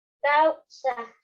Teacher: causa tiene una vocal abierta y una vocal cerrada. Aquí tenemos a la A y la U. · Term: vocal abierta y vocal cerrada